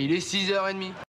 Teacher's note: Как отмечают авторы вот этого замечательного учебника на страницах 16-18, если внутри ритмической группы одно слово оканчивается на непроизносимый согласный, а второе начинается с гласного или с немого «аш», этот непроизносимый конечный согласный первого слова становится произносимым, сливаясь с начальным гласным последующего слова и образуя с ним один слог. При связывании согласные «с» и «x» озвончаются и переходят в звук «з». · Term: liaison